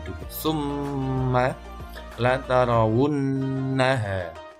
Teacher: adalah dengan dibaca dengung Endan m dan bahasa sederhananya seperti itu jadi n-nya dan m-nya ditahan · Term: ghunnah musyaddadah